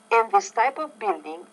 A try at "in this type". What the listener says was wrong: I would say in this type. Make sure you pronounce the T with more air.